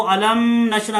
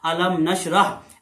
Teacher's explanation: अलम में मीम साकिन है, आगे मीम और बा के अलावा हरफ नून आ गया है तो ये बगैर गुन्ने के इजहार शफवी होगा